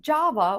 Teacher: Java, just like the coffee. Java with the stress on the first syllable